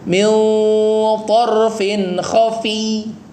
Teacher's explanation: Jadi ya-nya bertasdid, dikasih tekanan. Bukan khafi, tapi khafi.